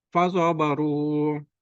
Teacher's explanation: Ini waw sukun dahulu dhamma. Dibaca 2 harokat. Disebut mat tabi'ih.